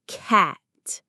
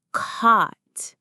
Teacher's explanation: First, get your mouth wide for ah, cat. Now drop your jaw for ah, cot.